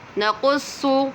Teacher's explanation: صاد کو پر پڑھیں گے کیونکہ حرف مستعلیہ میں سے ہے